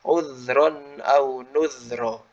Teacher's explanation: huruf dal itu sifatnya dia rikhwah atau rokhwah. Mengalir sifatnya, suaranya mengalir.